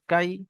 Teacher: ইয়া সাকিনের পূর্বে জাবার এসছে, কাফ ইয়া জাবার কাই, ইয়ালিন, ইয়ালিনকে নরম আওয়াজে তাড়াতাড়ি পড়তে হয়।